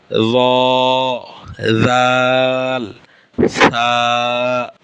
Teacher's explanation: আচ্ছা, 12 নম্বর মাখরাজ জিহ্বার আগা সামনের উপরের দুই দাঁতের আগার দিকে লাগাইয়া। জিহ্বার আগা সামনের উপরের দুই দাঁতের আগার দিকে লাগাইয়া 3টি হরফ উচ্চারিত হয়।